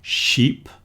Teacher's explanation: with a shh at the beginning and a long e